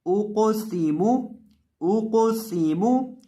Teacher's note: मीम के ऊपर पेश है तो इसको पढ़ते वक्त होंठों को गोल करेंगे